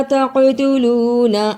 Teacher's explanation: قاف کے اوپر قلقلہ کیا، نون کو جلدی پڑھا